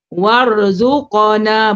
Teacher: Min وآية منك وارزقنا وأنت خير الرازقين. Wan, qaf mati, dia huruf qalqalah, dia ada sidah, dia sifat sidah. Sidah ni dia tertahan dan ada lantunan. Jadi warzuqana bunyi.